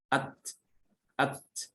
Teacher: Huruf ta dia punya sifat hamas. Ketika diucapkan dia disertai dengan hembusan nafas. Nafasnya mengalir.